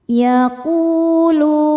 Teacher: lu hukumnya mad tabi'i dhahiri sebab ada waw sukun sebelumnya dhammah. Cara bacanya panjang 2 harokat.